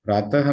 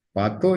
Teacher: प्रातः में यह जो प और र मिले हुए हैं इस र का लोप हो गया तो प रह गया